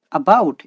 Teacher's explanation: In this word about, we use stress on the bout syllable.